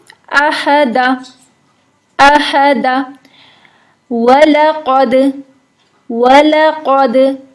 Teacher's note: दाल पे कलकला होता है साकिन हालत में